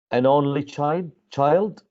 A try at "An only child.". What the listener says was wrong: That's you're giving me the answer with a tone of a question.